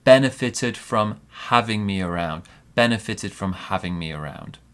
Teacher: So big stress on benefit, small stress on the verb.